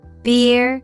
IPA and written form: bɪər (beer)